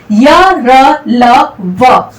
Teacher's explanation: अंतस्थ व्यंजन की यदि बात की जाए तो इनके उच्चारण में जो है बहुत ही कम समय लगता है और बहुत ही कम समय के अंतर्गत जो है हमारी जिह्वा जो है मुख के अंतर्गत किसी भी भाग को पूरी तरह से स्पर्श नहीं करती है, तो इन्हें कहा गया है अंतस्थ व्यंजन।